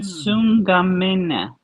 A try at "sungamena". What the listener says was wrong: Yeah, you first, you from second, make sure you drop your nasal. Tungamene. From second singular, Sungamene. No nasal, please.